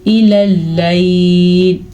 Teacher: الی اللیل، الی اللیل، جیم پہ رکنا جائز ہے تو ہم یہاں پہ رک جائیں گے اور لام جو ہیں وہ باریک پڑھے جائیں گے